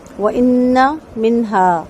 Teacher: وَإِنَّ میں نون کو دو حرکت غنہ کریں گے اور نون کا زبر لمبا نہیں کریں گے ۔ منہا میں نون ساکن کے بعد ہا ہے، اظہار ہوگا،